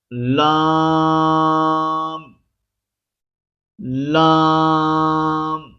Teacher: زبان کے باریک کنارے جو دانتوں کے سامنے والے ہیں کو اوپر والے دانتوں کے مسوڑ ہوں سے لگا کر باریک آواز میں پڑھیں گے